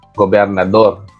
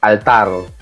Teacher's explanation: yung hugis ng bibig mo ay may hangin na, bahagyang hangin na lumalabas kapag nababanggit mo na yung tunog na R sa hulihan ng salita.